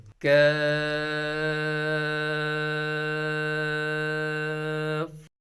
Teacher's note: کاف کے مخرج کا نام بھی حروف لاہویہ ہے۔ زبان کی جڑ اور تالو کے سخت حصے سے ادا ہوتا ہے۔ زبان کی جڑ تالو کے سخت حصے کی طرف بلند ہوگی، لگے گی تو کاف ادا ہوگا۔